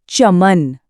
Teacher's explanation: जब हम च बोलते हैं तो हमारी जीभ का जो फ्लैट बीच वाला हिस्सा है वो ऊपर तालू को छूता है। बोल कर देखो सब चमन महसूस करो जीभ एकदम सीधी-सीधी ऊपर जाकर चिपक रही है। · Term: तालव्य वर्ण